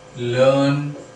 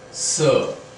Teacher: It can come in the mid as in learn, and it can be at the end as in sir, right? So it is quite a prolonged one, a central vowel, prolonged sound, stressed sound, spoken as so always it is like that sound will be there, and r is included with this, but that r is not generally pronounced as per British RP, right?